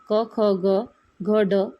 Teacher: क, ख, ग, घ, ड या व्यंजनाचा उच्चार कंठातून होतो. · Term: कंठवर्ण